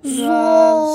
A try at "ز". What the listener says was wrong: سیٹی نہیں آئے گی, لو